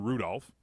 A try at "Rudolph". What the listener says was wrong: Who enunciates the L in Rudolph?